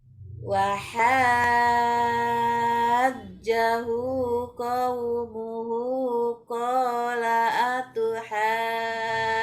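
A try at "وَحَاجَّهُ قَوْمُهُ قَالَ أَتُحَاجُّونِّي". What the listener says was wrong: Kurang panjang Bu. Nah, itu belum pas. Sepertinya narik napasnya belum pas. Di hidung dulu. Hidung, napas, habiskan, ditahan. Nambah, cuma ditahannya jangan terlalu lama. Ditahan dulu. Jadi 2 napas. Di hidung dulu, baru mulut. Nah, baru mulai baca. Jangan sampai di hidung, mulut, langsung dikeluarkan. Jangan, tapi langsung baca. Baca, keluarkan sedikit-sedikit.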